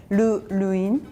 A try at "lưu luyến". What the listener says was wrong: Yeah, but the word lưu make it longer, like lưu luyến. Yeah, it's kind of question mark there. No, yours like luyến. But it has to go up.